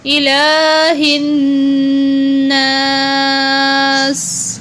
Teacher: لام کے اوپر کھڑی زبر ہے، اس کو کھینچ کے لمبا کر کے پڑھا گیا ہے، اور نون کو دوبارہ غنہ کریں گے شد کی وجہ سے۔